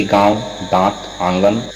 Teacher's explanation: अनुनासिक के उच्चारण में श्वास का कुछ अंश नाक से और कुछ अंश मुख से निकलता है, अनुनासिक अनुस्वार की तरह ही होता है, इसमें कुछ श्वास नाक से और कुछ मुख मतलब मुंह से निकलता है, उच्चारण में लघुता, अश्व की स्थिति मतलब कम समय लगता है।